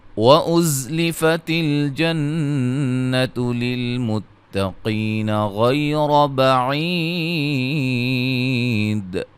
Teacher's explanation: زا کو سیٹی سے ادا کریں گے · نون مشدد پہ غنہ ہے